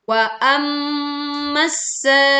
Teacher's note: Dengungkan mim bertasydid dengan dengung yang sempurna.